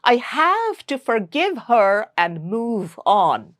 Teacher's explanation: My jaw drops a lot on the a sound for the word have.